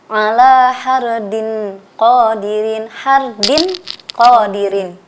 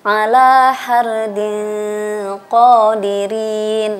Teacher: Ikhfa itu artinya samar. Jadi kita membaca nun, bunyi n-nya itu samar, tidak jelas.